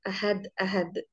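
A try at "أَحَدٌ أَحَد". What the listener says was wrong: Ahadun ahad dalam bahasa Arab mereka ucapannya ahadun ahad, ahadun ahad, bukan ahad ahad.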